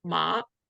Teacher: And then the third one is ma. So kind of goes up and down and up. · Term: third tone